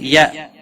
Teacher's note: حمزہ ساکن کو تھوڑا جھٹکے کے ساتھ ادا کریں گے